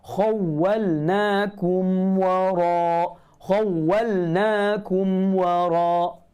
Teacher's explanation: Dan lebih ditekankan. Ketika mim mati bertemu dengan waw, kita kena kemaskan lagi 200% kena tutup mulut tu. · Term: Izhar syafawi